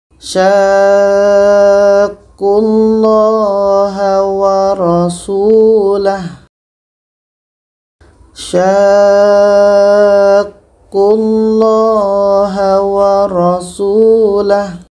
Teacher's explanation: kita panjangkan 'sya' ini selama enam harakat sebelum masuk ke huruf dengan shadda